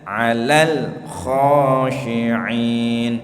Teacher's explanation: 'alal khashi'in. 'Alal itu ujung lidahnya nempel pada gusi, ditahan dulu sebentar sampai suaranya habis. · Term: huruf lamnya